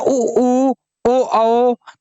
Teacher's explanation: ओठ कैसे हो जाते हैं, ओष्ठ कैसे हो जाते हैं, गोल हो जाते हैं। बोलते ना ऊ ओ तो ये गोल है।